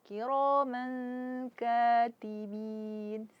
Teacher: ro tebal karena dia berharakat fathah lalu ada alif jadi e mad thabi'i man di sini ada ee tanwin fathatain berjumpa dengan kaf maka hukumnya adalah ikhfa.